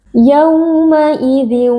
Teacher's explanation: sebelumnya berharakat fathah wau sukunnya kita baca dengan lunak